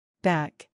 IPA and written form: bæk (Back)